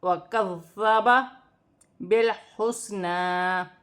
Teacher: کاف باریک والا ہے، کاف کو ذال کے ساتھ ملا کر پڑھا جائے گا، ذال نرمی والا ہے اور مشدد ہے، اسے 2 مرتبہ پڑھا جائے گا اور سیٹی کے بغیر، سیٹی نہ ہو.